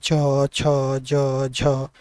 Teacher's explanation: इन ध्वनियों को उच्चारण करने में क्या होता है, तालु का प्रयोग होता है, तो ये क्या है, तालव्य वर्ग में आती है।